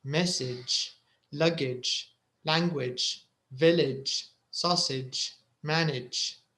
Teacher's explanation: And the second group, we talked about the ending ij. It's written A-G-E, but you pronounce it ij. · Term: ij sound